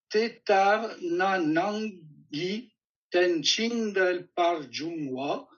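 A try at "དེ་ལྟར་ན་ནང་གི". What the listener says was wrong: Une seule erreur. Tetarna. Nangi. Tu arrêtes à na. Tetarna. Tetarna. dit tetarnanang. C'est tetarna, et puis ensuite c'est nangi tenching del warjungwa.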